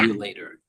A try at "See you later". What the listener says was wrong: yeah, exactly.